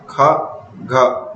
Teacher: महाप्राण, इनका उच्चारण करते समय अधिक समय लगता है, अधिक प्रयत्न करना पड़ता है और श्वास वायु अधिक मात्रा में अधिक वेग से बाहर निकलती है तथा हा की ध्वनि अंत में सुनाई देती है